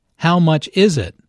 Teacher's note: Notice that the main sentence stress falls on is in this question.